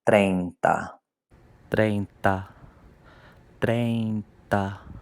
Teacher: That E and that I form a diphthong, treinta. So it blends one into the next.